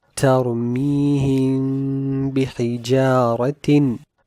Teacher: the ghunnah of this meme sakin will be extended due to iqlab